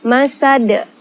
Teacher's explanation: karena ada huruf Qalqalah pada akhir kalimat maka dibaca memantul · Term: qolqolah kubro